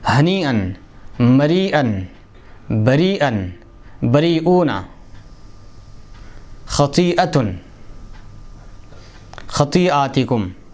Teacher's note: حمزے کو یا سے بدلتے ہیں اور پھر یا کو یا میں ادغام کر کے پڑھتے ہیں